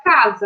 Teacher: quando o S está entre duas vogais, o som dele não é o som de S, e sim de Z. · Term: som de Z